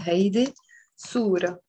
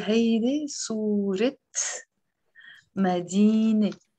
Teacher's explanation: But you see, I'm not pronouncing the T مربوطة.